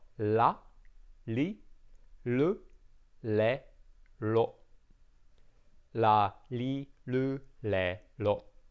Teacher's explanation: it's that flicking of the tongue that makes that la sound · in Japanese we don't roll the tongue we we flick the tongue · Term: tongue flick